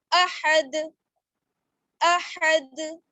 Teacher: جب دال پر سکون آ جائے گا تو یہ حروف قلقلہ میں سے ہو جائے گا, تو یہاں پر قلقلے کے ساتھ وقف کریں گے. آواز بند نہیں ہونی چاہیے, آواز لوٹ کر ٹکر کھا کر واپس آئے گی